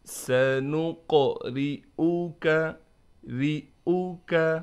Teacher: سَنُقْرِئُكَ، قاف پر قلقلہ بھی کریں گے اور قاف کو موٹا کر کے بھی پڑھیں گے، اس کے بعد را ہے، را کو ہم باریک کر کے پڑھیں گے، اس حمزہ کو ہم بالکل نہیں کھینچیں گے اور جھٹکا بھی نہیں دیں گے